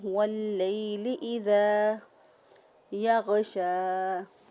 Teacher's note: لام زبر یا لی، لام یا ساکن سے پہلے والے حرف پر زبر، تو یہ یا لین ہے، اس کو نرمی سے اور آسانی سے ادا کریں گے۔ واللیل اذا، ذال کو نرمی اور مد کرتے ہوئے اس کو ادا کریں گے، کیونکہ دال سے آگے الف ہے، یہ الف مدہ ہے، الف سے پہلے والے حرف پر زبر ہو تو وہ الف مدہ ہوتا ہے۔ · غین کو ادنی حلق سے ادا کریں گے، یعنی گلے کا وہ حصہ جو کہ منہ کی طرف ہوتا ہے